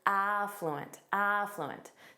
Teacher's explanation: syllable stress on the first syllable